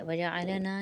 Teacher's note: نا کے اوپر 1 الف کی مقدار کیونکہ الف مدہ بن رہا ہے